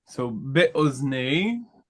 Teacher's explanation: This is a kamatz katan, as it is in a closed, unaccented syllable. The accent, as you can see, is on the last syllable.